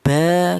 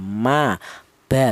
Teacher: mim dan huruf ba ini itu dihasilkan dari kedua bibir yang rapat. Kita bilang ba, kita bilang ma.